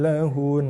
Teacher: Kalau kita waqaf pada nun dan mim bersabdu, dengung dikekalkan.